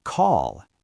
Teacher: Ends in a voiced L sound.